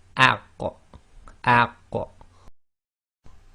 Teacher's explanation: it's a very slight echo, and it's only the sound made of releasing the 2 parts of articulation. So you don't overdo it like aq or over-emphasizing, because then you may end up making the qaf sound as if it's got a fatha on it.